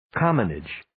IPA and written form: 'kɑːmənɪdʒ (Commonage)